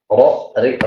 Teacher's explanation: Ini hurufnya hanya 1, yaitu ro. Ro, ro dapat kita rasakan lidah kita ada getaran seperti itu, bolak-balik bergetar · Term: takrir